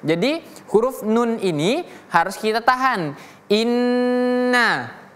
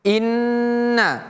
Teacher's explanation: Ya, huruf nunnya harus kita tahan. Jadi seperti dia mengucapkan dua huruf nun. Ada dua bunyi dari huruf nun tersebut. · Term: huruf tasydid